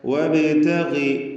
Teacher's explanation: ഇവിടെ ബാഇൻ്റെ സുക്കൂൻ ഖൽഖല സുഗ്റ നൽകി ബാഇൻ്റെ സുക്കൂനിനെ ചലിപ്പിച്ച് ഹറക്കത്ത് പോലെ വ്യക്തമാക്കണം. വബ് എന്ന് വ്യക്തമാക്കണം എന്നർത്ഥം.